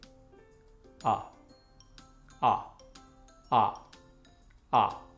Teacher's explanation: a língua fica no meio baixo da da boca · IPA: ʌ